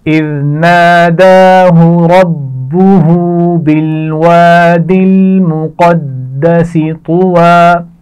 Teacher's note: مقدسی، قاف کو موٹا پڑھا جائے گا، دال پر شد ہے تو سختی سے پڑھا جائے گا